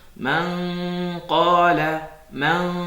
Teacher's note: J'ai pas collé la langue du palais. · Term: l'ikhfa